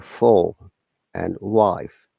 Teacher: Alright, and the voiceless F sound produced by stopping and releasing air between the bottom lip and the front side of the top teeth. The sound can be found in English words such as friend, for, love, after, life, phone, and stuff.